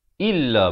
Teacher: Hamzah baris kasrah bunyi i, bukannya bunyi e.